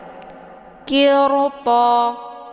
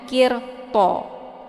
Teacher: karena huruf sesudah ro sukun adalah huruf itabq yaitu Huruf tebal th maka ro ini juga dibunyikan secara tebal · ro ini dibaca tebal meskipun dia berharakatnya kisrah sebelumnya Kenapa dibaca tebal karena huruf sesudah ro sukun adalah huruf itabq